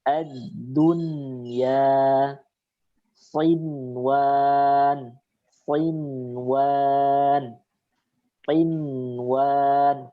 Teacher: Nunnya tetap dibaca izhar. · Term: izhar mutlak